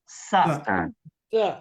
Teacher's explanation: শীষ বাজাতে গিয়ে দেখবেন আপনি যে আপনার জিহ্বার আগা নিচের দাঁতের গোড়ার সাথে যুক্ত হচ্ছে